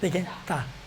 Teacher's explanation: اچھا اس کے بعد تا ہے. دیکھیں تا باریک ادا ہوتا ہے، دیکھیں تا، یہ کہتے ہیں یہ نوک زبانی ہے